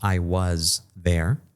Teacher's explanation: Entonces vibramos un poquito más esa S y es la representación, es la Z